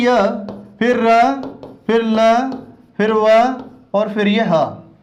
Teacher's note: क्योंकि जब हम इनका उच्चारण करते हैं तो इनका उच्चारण करते समय हमारे कंठ में कंपन ज्यादा होता है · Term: सघोष व्यंजन